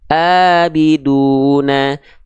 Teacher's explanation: kalau hamzah dia dilafalkan dari tenggorokan paling bawah atau tenggorokan paling dalam